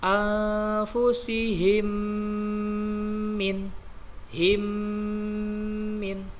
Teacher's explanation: didengung bunyi mim sukun bertemu huruf mim, disebut dengan idgham mutamasilain.